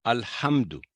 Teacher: میم پر آواز لمبی نہیں کرنی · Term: اظہار